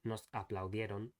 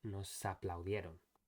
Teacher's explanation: the s needs to move over to the first syllable of the word afterwards, since it starts with a vowel.